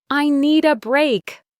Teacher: The D from need links with the A.